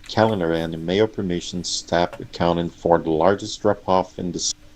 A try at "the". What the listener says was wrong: TH versus D here.